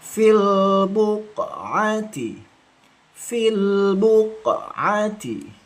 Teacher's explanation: Ini lamnya mengalir fil. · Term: rakhah